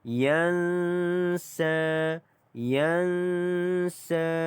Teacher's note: di sini ada nun mati ya, bertemu dengan huruf sin, maka di sini didengungkan dua harakat.